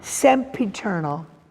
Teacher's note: introduces the harsh voiceless stop P